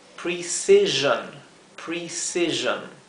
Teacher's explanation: en inglés termina en o n sí o i o n la o se pronuncia como un sonido intermedio entre una o y una e · la s que se encuentra entre dos vocales o sea entre dos I se pronuncia como la s zumbada Z Así que esto se leería precision precision bien ahí está